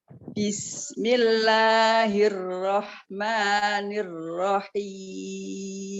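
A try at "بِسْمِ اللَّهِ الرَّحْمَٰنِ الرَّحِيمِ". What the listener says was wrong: Tapi harokat kasrohnya jangan agak lebih diturunkan lagi. Jadi jangan bismillah, tapi bismillahirrahmanirrahim. Untuk menurunkan mengucapkan kasroh itu turunkan aja bibir bajunya.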